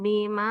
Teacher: Maanya panjang lima harakat.